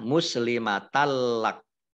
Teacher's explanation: Tak langsung masuk ke huruf lam, ditandai dengan ada tasdid tetapi tidak mendengung, ya, tidak gunnah.